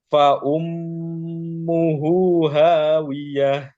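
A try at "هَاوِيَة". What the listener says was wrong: Tipiskan lagi haknya. Ha. Ha. Hawiyah.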